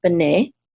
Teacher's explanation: the accent is on the second syllable because this is a check mark right here and then we